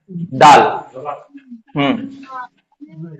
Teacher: زبان کی نوک اور اوپر کے دونوں دانتوں کے پیچھے کا حصہ